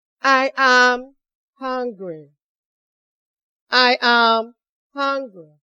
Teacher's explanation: The first one is falling tone, in which the voice goes down at the end of the sentence.